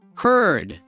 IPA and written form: hɝd (herd)